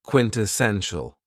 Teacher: this word has 4 syllables, and the stress is on the third syllable